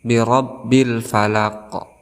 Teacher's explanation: ada ra di sini berharakat fathah, kita hukumi sebagai tafhim, artinya tebal. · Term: al-qamariyah